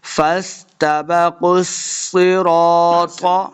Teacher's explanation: قاف اور صاد دونوں حروف مستعلیہ سے ہیں، ان کو ہم نے موٹا کر کے پڑھنا ہے